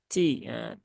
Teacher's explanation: huruf Ta ini juga sama dengan Kaf ya dia ada sifat hamsnya